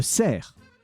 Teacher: But when you write the word for a deer, it's a cerf. You do not pronounce the F. And that specific C is pronounced like an S.